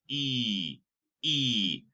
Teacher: And if you see here in blue, it is unrounded because our lips are actually going like a smile instead of round